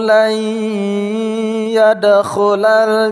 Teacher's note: nun mati temu dengan ya idgham bi gunnah